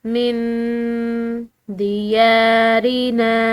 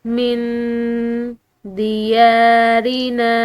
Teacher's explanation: من دیارنا، نون ساکن ہے، اس کے بعد دال ہے جو کہ حروف اخفاء میں سے ہے، تو اس کی وجہ سے ہم نے اس نون کو مخفی کر کے اس کی آواز کو ناک میں چھپاتے ہوئے نکالنا ہے